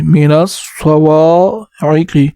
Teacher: واو کے بعد الف ہے تو ایک الف کی مقدار واو کو اوپر کھینچیں گے